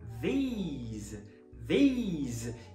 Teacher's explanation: O plural da palavra this, que significa esses, essas, estes, essas, você também começa com é, th. Só que depois o i é longo, não é mais o e do this. Agora é o ei, ei, ei.